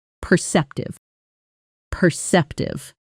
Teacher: Notice the stress on the second syllable